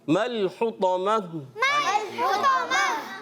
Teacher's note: اب گول تا کو وقف میں ہم نے کیا کیا, ہا سے بدل دیا